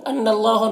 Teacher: نون مشدد غنہ کے ساتھ پڑھیں گے اور اللہ کے لام کو پر پڑھیں گے، کھڑا زبر ہے، ایک الف کے برابر کھینچیں گے۔